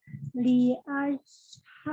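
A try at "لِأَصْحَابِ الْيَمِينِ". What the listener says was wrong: Li as tidak ash. Tidak ash. Li as. Safir ya, sofir ya.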